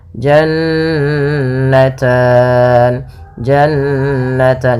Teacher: Maka ini kita namakan dengan ghunah. Bacaan ghunah yaitu suara nunnya ditahan dua harakat.